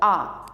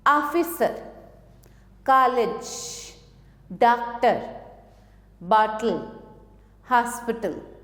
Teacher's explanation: ये आ और ओ के मध्य की ध्वनि है। बड़ा आ और ओ के बीच की जो ध्वनि है वो है आ। जैसे ऑफिसर, कॉलेज, डॉक्टर, बॉटल, हॉस्पिटल आदि, क्योंकि ये सभी शब्द जो हैं अंग्रेजी के शब्द हैं, तो इसमें हम ये आ का प्रयोग करते हैं।